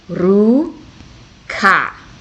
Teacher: So it's like an R, but you roll it. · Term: roll your R's